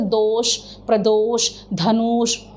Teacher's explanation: जब विसिल और फोर्स ज़्यादा है तो हम षटकोण का श इस्तेमाल करते हैं